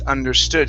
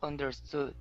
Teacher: the stress goes at the very end